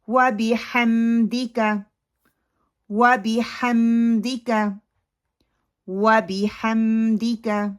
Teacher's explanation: ہا کو ہا میں نہیں بدلنا. دال کی جو زیر ہے اس کو مجہول نہیں کرنا · دے کو لمبا نہیں کرنا، کاف کو لمبا نہیں کرنا، اور وا کو راؤنڈ اپنے لپس کرنے ہیں. با کی جو کسرہ ہے اس کو مجہول نہیں پڑھنا. ہا کو ہا میں نہیں بدلنا.